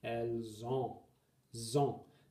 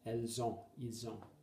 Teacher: Notice that S-O gives a kind of Z sound. It's called liaison.